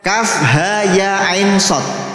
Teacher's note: Nun sukun bertemu shad bacaan ikhfa, berarti dengung. Nah, dengungnya ini harus setelah selesai matnya.